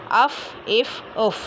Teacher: नीचे के होंठ के गीले हिस्से और सामने के ऊपर वाले 2 दांतों के किनारे से अदा होता है